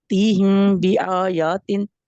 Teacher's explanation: جی اور تیہم تا کے نیچے زیر ہے اور ہم حروف ہلکی ہے اور میم غنہ اس لیے کرنا ہے کہ اس کے بعد با آ گیا ہے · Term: اخفاء الشفا